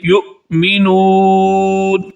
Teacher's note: یہ حمزہ ساکنہ ہے. حمزہ ساکنہ کو آپ جھٹکے کے ساتھ پڑھتے ہیں. یؤمنون، یؤمنون نہیں کریں گے، کیا پڑھیں گے؟